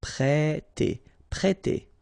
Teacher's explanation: We've got here this accent circumflex on the top of E, so if you remember carefully, it will produce the sound E, so really open, E, so prêter, prêter.